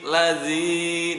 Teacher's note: Lazi dibacanya panjang 2 harokat, mad tabi'i.